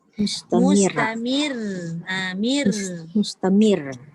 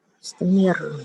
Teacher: Dia bertakrir ataupun bergetar tu dekat depan je. Yang belakang dah tak ada getar dah. Mustamir. Okey, dan ditekan sebab dia ada 2 huruf.